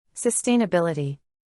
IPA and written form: səˌsteɪ.nəˈbɪl.ə.ti (Sustainability)